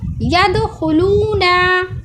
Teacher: खौ हुरूफ मुस्तालिया है, इसको गोल करके पढ़ा जा रहा है